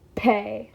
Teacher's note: To say pay, you can't bring your voice in until after the P. If you do, you say bay.